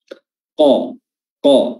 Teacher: Huruf qaf, ya, huruf qaf, lidah bertemu dengan langit-langit bagian dalam atau langit-langit lunak. Qa, ya, pangkal lidah, ya, paling belakang lidah bertemu dengan paling belakang mulut.